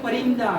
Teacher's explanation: अनुस्वार लगा है इसलिए न का उच्चारण करेंगे